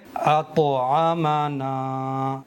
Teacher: طا کا مخرج ہے زبان کی نوک ثنایا الیاء کی جڑ سے مل کر کے طا ادا ہوتا ہے، تو ज़बान की नोक को सनाया उलिया यानी ऊपर के सामने के इन दो बड़े दांतों की जड़ पर लगाएंगे तो अदा होगा। तो ज़बान की नोक सनाया उलिया की जड़ पर लगा करके फ़ौरन अलग हटा लेंगे। इसी को कलकला करना कहते हैं।